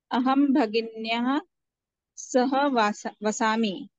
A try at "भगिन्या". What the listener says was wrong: हाँ, भगिन्या, न्याहा नहीं करना है, वो